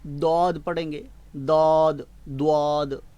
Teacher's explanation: دعاد جب آپ پڑھیں گے تو آپ دال پر پیش کے ساتھ پڑھ رہے ہیں